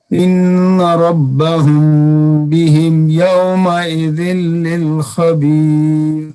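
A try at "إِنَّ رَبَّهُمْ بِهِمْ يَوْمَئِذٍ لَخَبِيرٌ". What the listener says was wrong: یومئذ لخبیر، ذل نہیں کرنا، لام ایک ہے 2 نہیں ہے. پھر پڑھیے.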